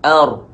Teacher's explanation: ra mati, dengan ar, muncung sedikit mulut.